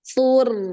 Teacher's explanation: Jadi su-nya pendek ya. Ro-nya ngalir ya.